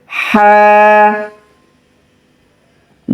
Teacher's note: গলার মাঝখান থেকে চাপ দিয়ে বলতে হবে